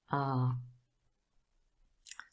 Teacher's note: the mouth is really wide open and the sound is produced at the back